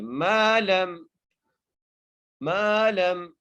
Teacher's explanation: میم کو ایک الف کی مقدار کھینچ کے پڑھیں گے